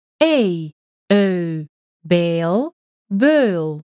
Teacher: Your tongue follows the path of the familiar-sounding diphthong A, but you're going to round your lips. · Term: gliding vowel